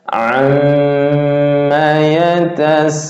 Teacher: Mat arid lisukun. Mana panjangnya bisa 2, 4, 6 harokat.